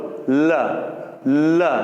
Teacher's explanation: तो ऐसा व्यंजन जिसको जब हम उच्चारित करें तो जीभ बीच में खड़ी हो जाएगी खंबे की तरह, रुकावट बन के, और जो हवा है उस जीभ के दोनों तरफ से बाहर निकलेगी। ल बोलो, ल जीभ तो यहां खड़ी होगी और हवा दोनों तरफ से बाहर निकल रही है। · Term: पार्श्विक व्यंजन